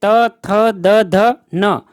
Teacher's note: त वर्ग में त, थ, द, ध, न, यह है दंतव्य ध्वनियां